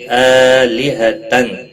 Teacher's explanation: حمزہ کے اوپر کھڑی زبر ہے، 1 الف کے برابر کھینچ کر پڑھیں گے۔ آلہتن تنوین کے بعد حروف حلقی کا حمزہ آیا ہے، اس لیے اظہار حلقی ہوگا، گنہ نہیں کریں گے۔